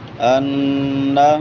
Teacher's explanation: نون مشدد ہے اور اس پہ غنہ ہوتا ہے، آواز کو ناک میں چھپائیں گے اور ایک الف کے برابر لمبا کریں گے